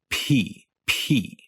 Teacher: the aspiration happens in that 1/10 of a second between when your lips pop open, P, and the vowel E starts. P, P. It's when you're making that H-like sound. · you'll start to feel buzzing in your throat as the vowel E starts